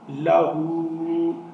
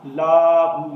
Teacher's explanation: اب اس میں اکثر لوگ غلطی کرتے ہیں کہ اس لام کو لمبا کر دیتے ہیں، اس کو لمبا نہیں ہونے دینا، اس کو لہو پڑھا جائے گا، لاہو نہیں کہنا